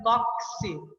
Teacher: Porque quando eu pronuncio a palavra tóxico, eu pronuncio o som do T, o som do O, o X está me trazendo o som de K e S